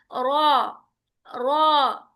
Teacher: इसके भी अलग रूल्स आपको आएंगे रॉ के, ठीक है। तो बहरहाल रॉ को पढ़ने का तरीका यह है कि ये पुर पढ़ा जाता है, हैवी